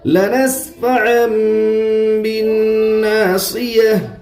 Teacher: تشدید کی آواز میں ایک قسم کی سختی ہوتی ہے، نون مشدد میں ایک الف کے برابر گنہ ہوگا، الف سے پہلے زبر ہے اس لیے الف مدہ ہوگا، الف مدہ کو ایک الف کے برابر کھینچ کر کر پڑھے.